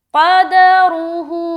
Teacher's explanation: تو یہاں پر قاف کو موٹا اور را کو موٹا نکالیں گے. را کے اوپر پیش آنے کی صورت میں را موٹا، اور قاف حروف مستعلیہ میں سے ایک ہے اسی لیے موٹا